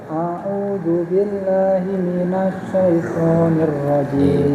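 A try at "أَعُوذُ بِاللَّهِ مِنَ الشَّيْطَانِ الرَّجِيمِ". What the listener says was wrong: Banyak shinnya juga masih berbenah ya. Minasyaitonir rajim.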